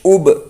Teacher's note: اب، حمزہ با پیش اب با زبر ب اب، حمزہ کے اوپر پیش ہے، پیش کو جلدی پڑھے، تھوڑا بھی نہ کھینچے، معروف پڑھے، مجھول آواز سے بچے، پیش کی آواز آگے کو جاتی ہے اور ہونٹ گول ہوتے ہیں۔ با کے اوپر تشدید ہے، تشدید والے حرف کو 2 مرتبہ پڑھتے ہیں، 1 مرتبہ پہلے والے حرف سے ملا کر، 1 مرتبہ خود سے۔